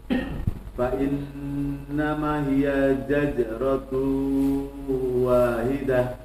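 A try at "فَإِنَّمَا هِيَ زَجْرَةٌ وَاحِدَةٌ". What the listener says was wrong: Ma-nya 2 harakat. Kemudian zajiro. Ma-nya masih 1 harakat ya. 2 harakat terusnya. Fa innama masih 1 harakat ya. Kalau barusan jim dua-duanya. Jadi yang pertama zai, zaje, zaje. Nah, tinggal dikurangi tekanan, tidak zaj, tapi zajiro, zajiro. Itu zai dua-duanya ya. Atau mirip jim dua-duanya. Zaje, zaje.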